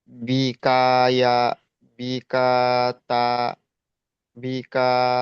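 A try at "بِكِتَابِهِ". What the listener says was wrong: আচ্ছা দেখেন বি কাতা বলেছেন না, কাফটা দেখেন তো যাবার না জের দেখেন তো।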